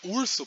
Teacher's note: esse O não é pronunciado como um O, ele é pronunciado como um U, que é um U um pouco mais centralizado. Então, esse processo é o alteamento, né?